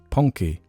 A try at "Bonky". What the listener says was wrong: More like Ponky. It's Bonky, not Ponky. Bonky, not Ponky.